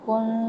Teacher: نون پہ ساکن اور اس کے بعد فا تو یہاں پہ باریک اخفا کر رہے ہیں